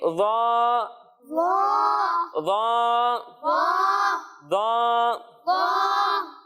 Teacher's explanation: ज़ा को जब हम पढ़ेंगे तो इसे हम मोटा कर कर पढ़ेंगे और ये भी ध्यान रहे कि इसमें सीटी की आवाज नहीं आएगी।